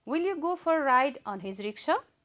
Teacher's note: It's rising tone because it is a yes no question, and as we discussed earlier in yes no question, we have to use rising intonation.